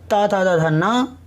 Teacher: अभी सूत्र है चौथे नंबर का, इसमें है ऋतु लसानाम दंतः, मतलब ली, तू मतलब ता था दा ना, ला मतलब ला, और सा मतलब सा। इनका उच्चारण स्थान है दंतः मतलब दांत